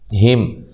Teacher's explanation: میم ساکن کا یہاں اظہار ہے، ٹھیک ہے، غنہ نہیں کریں گے